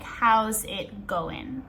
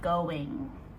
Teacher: when native speakers say this quickly, we actually do not pronounce the last G. So it comes out like, how's it going?